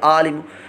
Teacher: आइन में حلق کے درمیان والے حصے سے نکلتی ہے. عین کی جگہ اگر حمزہ کی آواز نکلی تو یہ لحن جلی ہوگی